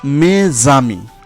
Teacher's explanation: এখানে মে শেষে এস আর আমির শুরুতে স্বরধ্বনি আ রয়েছে, তাই মেজামি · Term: সন্ধি